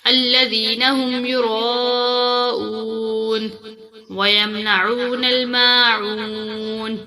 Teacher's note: عین کو تھوڑا کھینچ کر پڑھیں گے کیونکہ اس کے ساتھ واو ساکن ہے